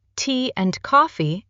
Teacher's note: And often becomes something like un, or even a simple n sound. Tea and coffee can sound more like teen coffee. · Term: weak forms